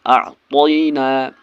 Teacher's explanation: یا لین کو جلدی پڑھنا ہے معروف آواز کے ساتھ، اس کو کھینچنا نہیں ہے